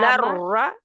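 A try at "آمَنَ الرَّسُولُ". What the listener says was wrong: नर रसूल, रा को लंबा नहीं खींचना, नर रसूल।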